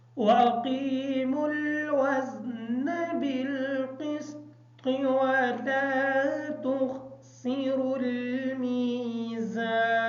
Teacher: बिलक़िस्त की जो त्वा है इस त्वा को क्लियर करेंगे ताकि आवाज़ अदा ना हो। वला तुख़सिरुल की जो खा है इस खा को मोटा पढ़ेंगे।